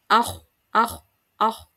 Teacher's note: meninggi ya meninggi sehingga tebal hurufnya